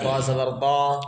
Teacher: کنارہ زبان دال سے مل کر ضاد ادا ہوتا ہے.